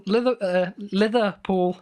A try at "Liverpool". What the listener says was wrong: Liverpool. Yeah, you struggle to say that like you've never heard the word before. You're pronouncing liver with like a TH instead of a V?